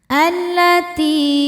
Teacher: Karena lamnya bertasydid, mengandung 2 lam ya, lam sukun dan lam fathah. Lam yang sukun tidak dibaca, masuk langsung ke lam kedua. · Ti hukumnya mad tabi'i dhahiri karena ada ya sukun sebelumnya kasrah. Cara bacanya panjang 2 harokat. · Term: alif lam syamsiyah